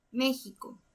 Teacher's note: la fuerza recae en la antepenúltima sílaba, entonces es una palabra esdrújula.